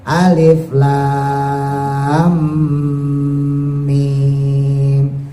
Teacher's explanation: Tapi kalau alif lam mim nggak boleh, karena lamnya ketemu mim maka harus diidghamkan.